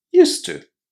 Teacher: But in English it doesn't matter because with used to we are joining used and to with just a single to sound